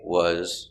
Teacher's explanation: that s is pronounced like a z